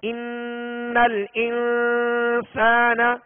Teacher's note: نون مشدد ہے لہذا نون میں غنہ کریں گے